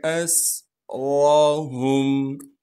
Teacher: حمزہ کو سین سے ملائیں گے اس لیے کہ سین ساکن ہے، سین کی آواز یعنی سیٹی کو صاف کر کے ادا کریں گے۔ را پر زبر ہونے کی وجہ سے را کو موٹا کر کے پڑھیں گے، ہا کو میم ساکن سے ملائیں گے بغیر غننے کے۔